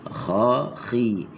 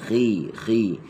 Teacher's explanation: dia tebal tapi ketebalannya paling kurang sekali dah. Tak banyak dah tebal dia. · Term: tafkhim nisbi